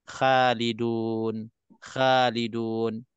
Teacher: makhraj Kha ini kena tebalkan sebab hurufnya semua huruf sifatnya semua sifat tebal